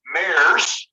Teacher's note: this s actually sounds more like a z